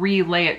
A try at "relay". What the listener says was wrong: Relay it? I like that you added extra syllables in there. Relay. Relay.